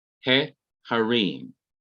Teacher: Notice the vowel changes from pathak to segol, short e. He harim. So this is not accented.